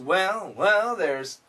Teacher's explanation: And this L makes the TH sound a little bit weak.